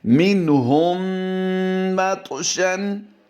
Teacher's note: طا کو ہم نے پر بھی کرنا ہے، قلقلہ بھی کرنا ہے